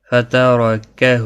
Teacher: را زبر کی وجہ سے پر پڑھا جائے گا. ہا کے اوپر الٹا پیش ہے ایک الف کی مقدار کے برابر کھینچ کر پڑھیں گے.